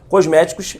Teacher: palavra proparoxítona a sílaba tônica não é a última não é a penúltima ela é a antepenúltima